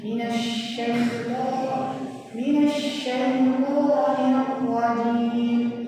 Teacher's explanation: shin bertasydid ditekan dan suaranya dialirkan